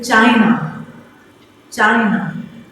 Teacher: Na is less stressed when we pronounce it, when we speak it. So na is less stressed. · So it has two syllables. So I put stress on the first one